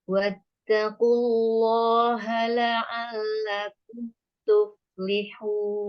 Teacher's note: Wattaqu tebal. Lam sukun tebal, lam fathah dua harokat tebal.